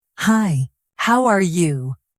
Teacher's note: make your voice go up a little. It sounds more friendly and natural. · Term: intonation